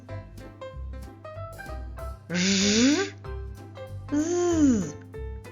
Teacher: горло вібрує. Ми долоною відчуваємо вібрацію голосових зв'язок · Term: Приголосні дзвінки